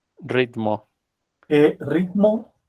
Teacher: tenemos que agregar una I después de la T. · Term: I invisible